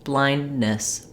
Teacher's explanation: So rather than blindness with a released D, blindness. So I'm stopping the air for that D, but then I'm just staying with my tongue in the closed position and proceeding right to the N. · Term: stop without a release